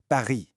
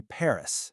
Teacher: The French R is born way in the back of your throat. It's less of a roll and way more of a a light gargle. It's a little vibration right at the top of your throat.